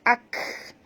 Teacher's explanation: kaf apabila dia mati bunyikan hamasnya ak. Jangan lantun ya